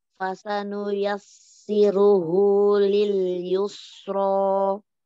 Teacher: Yang tebal ro dommahnya.